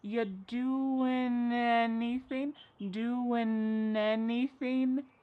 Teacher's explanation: We link together doing because we're going to drop the g. It ends with the sound n the n sound. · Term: dropping that g